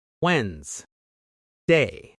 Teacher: the sound is actually simple. We don't say the first D.